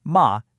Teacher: And the fourth is just a sharp decisive fall. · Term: sharp falling tone